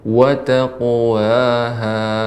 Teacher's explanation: Kemudian qafnya ketika qalqalah juga ditebalkan